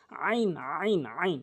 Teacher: হলকের মাঝখান থেকে চাপ দিয়ে বলতে হবে